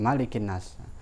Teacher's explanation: Dalam kitab qiraat sab'ah itu disepakati tidak boleh dipanjangkan, tapi pendek tetap malikin nas.